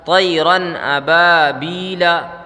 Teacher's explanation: اظہار کا قاعدہ۔ نون کو وہاں پہ ظاہر کر کے پڑھیں گے بلا غنہ کے، اور جلدی پڑھیں گے